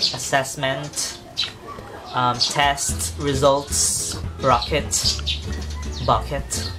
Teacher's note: The only key difference is that you aspirate every T that you can see in the word.